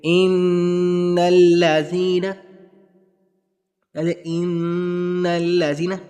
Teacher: آواز کو نکال رہے ہیں ہم, ناک سے نکال رہے ہیں, منہ سے نہیں, ناک سے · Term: گناہ